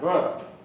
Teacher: र, जब र का उच्चारण करते हैं तो र मसूड़े से लग के लुढ़कता है, इसलिए इसको लुंठित वर्ण कहते हैं। र, र उच्चारण करके देखिए, जिह्वा का अगला भाग थोड़ा सा लुढ़कता है, र। और ल, ल जाकर मसूड़े से चिपकता है, जिह्वा का अग्रभाग, और अगल बगल से हवा निकल जाती है, इसलिए उसे पार्श्व ध्वनि कहते हैं। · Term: लुंठित ध्वनि